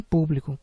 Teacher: público que é uma trisílaba sendo que a sílaba mais forte é a antepenúltima pu